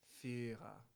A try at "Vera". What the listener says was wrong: Not V.